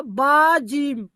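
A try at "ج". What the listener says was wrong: প্রথম লাস্টেরটা জিম বলছেন আর মাঝখানে একটা বা কেন বলছেন?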